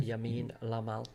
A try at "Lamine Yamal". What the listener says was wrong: Wrong way around, mate. You're saying Yamin Lamal. It's Lamine Lamine Yamal.